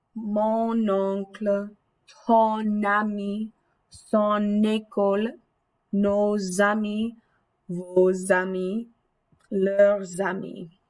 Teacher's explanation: that last sound in your possessive adjective glides over into the next word for some really smooth pronunciation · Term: liaison